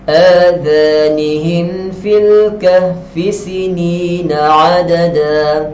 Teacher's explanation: Mim yang bertanda sukun, kita faham di sini tidak dengung.